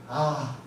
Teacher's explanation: 아라는 발음은 입을 크게 걸리죠 아 하고 크게 걸리죠 그렇기 때문에 입천장에서 혀가 많이 멀어지게 됩니다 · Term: 저모음